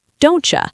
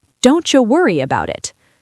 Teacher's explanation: When we speak fast, the t and the y mix together. They create a ch sound like in the word cheese. So, don't you becomes don't you.